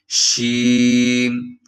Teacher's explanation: شین میں ایک صفت ہے تفشی، یعنی آواز پھیل جاتی ہے